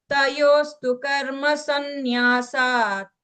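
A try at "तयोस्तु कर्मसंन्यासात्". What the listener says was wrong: சந்நியாசாத் அந்த இத்து கிளியரா கேட்கணும், சரியா? தயோஸ்து கர்ம சந்நியாசாத் கர்மயோகோ விசிஷ்யதே.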